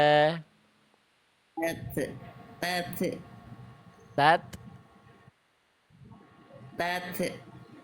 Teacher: tat enggak ada e enggak ada bunyi tenggorokan